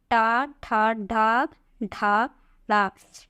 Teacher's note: इनका उच्चारण स्थान मूर्धा होता है।